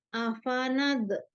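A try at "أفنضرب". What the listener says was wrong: Afanab tahan, jangan dilepas doanya. Jangan dipantul.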